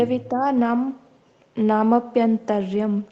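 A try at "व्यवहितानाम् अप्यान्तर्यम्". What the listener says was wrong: जी जी जी जी।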